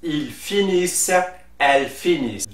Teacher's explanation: the ENT is not pronounced, it is silent like a regular silent E